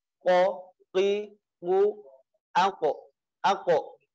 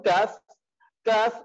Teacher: kita tempelkan lidah dengan langit-langit yang agak ke atas